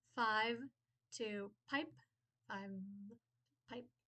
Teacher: We stopped that V, turned it into a P. And we also de-voiced the final consonant. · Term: stopping